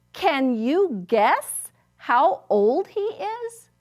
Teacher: Do you hear how it goes up because it's a question?